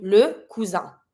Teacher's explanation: I-N here, careful. You don't pronounce the N. Why? Because the I plus the N makes the sound un.